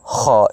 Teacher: اس کو ادنیٰ حلق کہتے ہیں، یعنی منہ حلق کا جو ہے وہ حصہ جو منہ کی طرف ہے